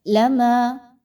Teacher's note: الف مدہ، 2 حرکات کے برابر پڑھیں گے